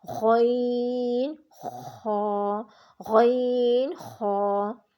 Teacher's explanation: غین اور خا ادنی حلق یعنی حلق کا جو منہ کی جانب والا حصہ ہوتا ہے وہاں سے ادا ہوتے ہیں۔ اور غین خا کو آپ نے خوب موٹی آواز میں پڑھنا ہے، ان کو باریک آواز میں آپ نے نہیں پڑھنا۔